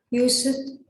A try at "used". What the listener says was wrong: Not use it. Used.